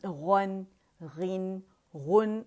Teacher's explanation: نون باریک ہوگا, اسے موٹا نہیں کریں گے